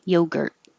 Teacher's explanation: The UR sounds like ER and hold the T. Yogurt. The E is not stressed, so you can say the E, eluded, or change the E to alluded.